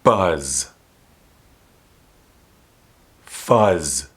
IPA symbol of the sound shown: z